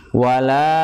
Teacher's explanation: La-nya panjang karena bertemu dengan mat, bertemu dengan hamzah ya. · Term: mat jaiz munfasil